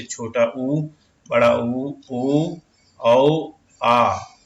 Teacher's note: जिन स्वरों के उच्चारण में होंठ वृत्ताकार हो जाते हैं वे वृत्रमुखी स्वर कहलाते हैं।